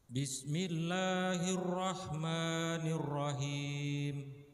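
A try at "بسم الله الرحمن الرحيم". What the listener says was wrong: Huruf lam lafzul jalalah ini nama Allah yang suci agak panjang. Jadi dipendekin saja.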